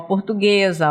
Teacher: É interessante a gente perceber isso, que o som do S, ele vai se realizar em forma de Z, né? Porque ele está entre duas vogais. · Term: som de Z